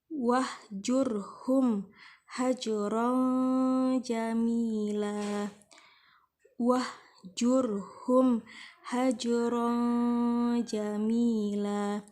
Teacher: mim mati bertemu dengan huruf H hukumnya adalah izhar syafawi dibaca dengan jelas